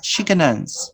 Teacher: Notice that I pronounce this word can in two different ways. I pronounce the first can using the schwa. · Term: weak form